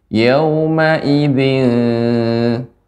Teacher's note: Yauma idzin, hamzahnya lebih diperjelas lagi, Ibu.